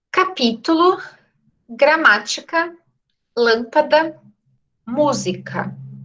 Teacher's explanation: Todas as palavras do agrupamento da esquerda são acentuadas, são palavras proparoxítonas, isto é, palavras cuja sílaba tônica é a antepenúltima